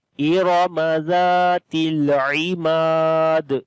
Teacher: Mim we long due to alif madda and on the dal we make qalqala.